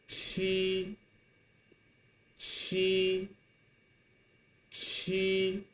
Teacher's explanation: it's pronounced the same way as ji. However, it requires stronger airflow.